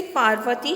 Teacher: पा, व और ती की तुलना में जो र है उसके उच्चारण में कम समय लगता है, अर्थात अर्धमात्रा के उच्चारण में जितना समय लगता है उतना ही समय एक व्यंजन के उच्चारण करने में लगता है।